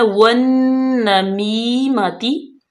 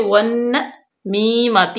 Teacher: उसके बाद है वन नमीमाती, वन, नून मुशद्दद है, इस पे गुन्ना करेंगे और रुकेंगे।